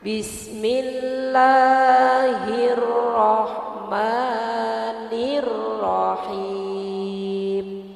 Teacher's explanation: Sebenarnya Bismillahirrahmanirrahim. Lanya itu Bu cuma satu alif atau dua harokat ya Bu ya. Jadi kita memang bacanya tidak boleh terlalu panjang.